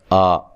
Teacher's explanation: یہ جو حمزہ پہ کھڑی زبر ہے، اس کو ایک الف کی مقدار کے برابر لمبا کریں گے، اور یہ الف مدہ کے قائم مقام ہوتی ہے۔